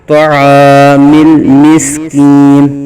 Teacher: عین کو باریک حلق کے درمیان سے ادا کریں گے، الف مدہ ہو رہا ہے، طعام المسکین، مل پہ لام کی آواز ہلے گی نہیں، مل نہیں کریں گے بلکہ طعام المسکین، ولا یحد علی طعام المسکین۔